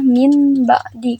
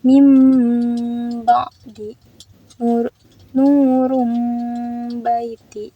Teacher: bila sukun atau tanwin bertemu huruf ba maka berubah menjadi mim. Harusnya kan kalau misalnya tidak ada mim dibacanya min ba'di, karena ada huruf tanwin bertemu huruf ba maka dibacanya seperti mim.